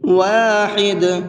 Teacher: واحد، جب یہاں پر وقف کریں گے تو یہ دال ساکن ہو جائے گا، اور دال حروف قلقلہ میں سے ہے، جب یہ ساکن ہوتا ہے تو اس کو ہلکا سا ڈبل کر کے پڑھتے ہیں، قلقلہ کر کے پڑھتے ہیں۔